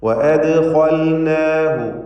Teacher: ദാലിൻ്റെ സുക്കൂനിന് ഖൽഖല സുഗ്റ നൽകി ശബ്ദം ഹറക്കത്ത് പോലെ ചലിപ്പിക്കുക.